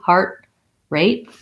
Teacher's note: rather than heart rate with a release t i just lift up for the t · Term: stopped t